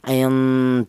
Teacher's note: huruf nun ini keluarnya huruf berasal dari ujung lidah menyentuh langit-langit mulut kemudian berjumpa dengan huruf dal di mana huruf dal ini keluarnya